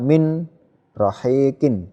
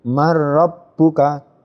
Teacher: Nun sukun ini bertemu dengan ro, masuk tidak mendengung. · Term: bila gunnah